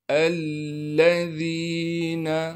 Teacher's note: الذین، حمزہ کو لام سے ملائیں گے، اس لیے کہ لام پر تشدید ہے، تشدید ہونے کی وجہ سے تھوڑا سا ٹھہراؤ رکھیں گے، اور لام پر زبر کو بھی پڑھیں گے بغیر کھینچے۔ ذال کو نرم کر کے باریک کر کے پڑھنا ہے، اور ذال کے بعد یا مدہ ہونے کی وجہ سے ذال کو ایک الف کے مقدار کھینچیں گے، اس نون کو ہم نے بالکل نہیں کھینچنا ہے۔